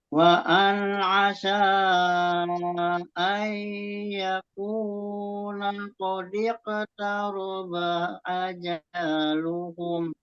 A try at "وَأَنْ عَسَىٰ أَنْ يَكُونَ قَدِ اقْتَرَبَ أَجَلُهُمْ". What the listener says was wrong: Lagi Pak di situ ajaluhum. Nah, di situ dibuat panjang lagi di situ tadi.